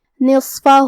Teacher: صاد حروف التفخیم میں سے ہے تو ہم یہ حرف کو بھاری آواز میں اور منہ پھلا کے پڑھیں گے اور جو کہ اس پہ جزم ہے لہذا ہمیں صاد کو ظاہر کرنا ہے.